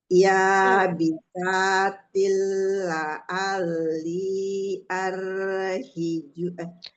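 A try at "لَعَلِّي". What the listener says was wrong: Linya 4 dulu, 4 harakat. ukhara ya bisatil la'alli.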